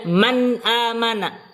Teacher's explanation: Nun sendiri memiliki sifat gunnah. Tapi kalau dia nun sukun bertemu dengan huruf idhar halqi, nunnya harus jelas, tidak disertai gunnah.